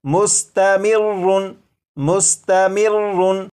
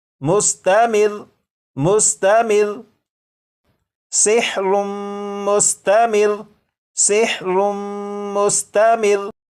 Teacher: रा के ऊपर जो तशदीद है इसे तो पढ़ेंगे, लेकिन रा के ऊपर जो 2 पेश हैं इन्हें ख़त्म कर देंगे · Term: वक्फ